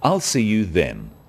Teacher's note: is now a definite commitment and an end to the arrangement notice how the stress is on the word then to confirm that the time is definite